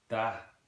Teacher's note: Dropping the TH and instead having a da, and then also dropping the consonant at the end